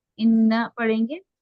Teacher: नून पर जबर की हरकत से जल्दी अदा करेंगे, बिल्कुल नहीं खींचेंगे